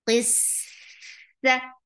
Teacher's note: Khol qis qaf is heavy for kasra give e sound attached with seen. Seen will get rakhawa and seen will get the safir and make it light. Qissa, fatha is short.